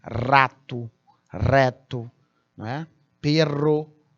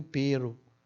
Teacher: esse RR duplo ele é forte vibrante é igual o r sozinho no início de palavras